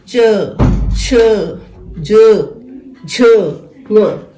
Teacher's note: जब इनको बोला तो हवा जो थी तालु के साथ टकराती है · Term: च्वर्ग